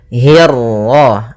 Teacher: hi-nya tipis, kasrah bertemu ra yang tebal. Nah, di sini kita namakan dengan ra tafkhim.